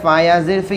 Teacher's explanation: یا ساکن سے پہلے زیر یا مدہ ہوگا، کھینچ کر پڑھیں گے۔